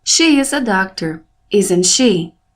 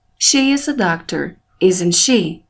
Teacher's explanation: É o que chamamos de rising intonation, entonação crescente, pois nossa voz se eleva no final da pergunta. Ela fica mais forte na última palavra da pergunta.